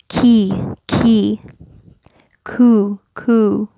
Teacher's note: we have the letter K in English and it's getting the hard palate which is here it's not way back here that's gonna make